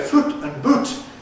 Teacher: Scottish people all say foot and boot as perfect rhymes.